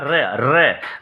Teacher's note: लुंठित का मतलब भी भैया कि जीभ जो है, प्रकंपित या लुंठित जीभ है 2 से 3 बार कंपन करे। जीभ जो है 2 से 3 बार कंपन करे।